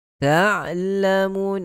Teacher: Ta'lamun, ain, huruf ain, ingat kena berikan sifat at-tawassut ataupun bainiyah pada huruf ain, yang mana suara yang kita nak imbangkan antara suara yang dilepaskan dengan suara yang tertahan